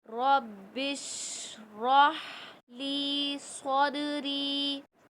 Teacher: شین میں تھوڑی سی شور کی آواز، روح کا مخرج وسط حلق سے، اور لی میں یا مدہ ہے، اس کو ایک الف ہی مقدار کھینچ کے پڑھیں گے۔